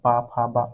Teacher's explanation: ओठ से निकलता है